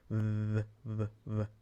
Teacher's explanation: but lightly so V VV that is what you're going for you're trying to get a little bit of vibration but it's not as overt as we do it in English